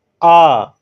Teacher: बड़ा आ का उच्चारण करने में मुंह एकदम खोल दे रहे हैं, तो आपका ये विवृत हो गया।